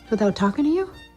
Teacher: This T starts a stressed syllable. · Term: true T